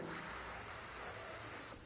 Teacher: सरिता वाले स की ध्वनि है सीटी की ध्वनि जैसे सीटी की आवाज आती है इस तरह की आवाज और शलगम वाले श की ध्वनि तब